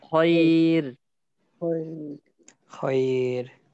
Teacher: ইয়া সাকিন থাকলেই, থাকার কারণে আমাকে এটা পাতলা করে করতে হবে, পাতলা হবে খয়ের খয়ের।